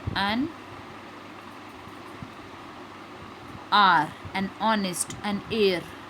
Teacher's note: beginning with a vowel sound, as the initial consonant H is not pronounced